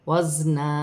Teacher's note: زا سیٹی والا حرف ہے، سیٹی کے ساتھ ادا کیا جائے گا.